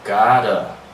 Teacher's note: Notice that I dropped the preposition to, right? And I replace it with the A and I give it a schwa sound